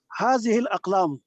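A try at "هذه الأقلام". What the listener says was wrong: پھر آپ نے حرکت نہیں پڑی. آپ تو ڈاکٹر صاحب ہیں, وہ بھی دل کے ڈاکٹر ہیں, آپ تو حرکت پوری کریں نا یار. الاقلام, هذه الاقلام.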